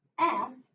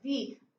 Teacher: And when I think about F, ooh, that is red. There's no voice there. But when I think about V, I'm voiced. I feel that vibration.